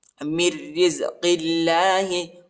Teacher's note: را کو باریک پڑھنا ہے، موٹا نہیں پڑھنا